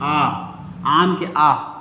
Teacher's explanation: देखो तो ऐसा स्वर वर्ण जिनके उच्चारण में हमारा क्या है इनके उच्चारण में अपना मुंह क्या पूरा खुला हो जाता है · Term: विवृत स्वर वर्ण